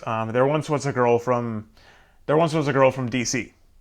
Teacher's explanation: That's a three syllable pattern. An anapest, unstressed, unstressed, stressed.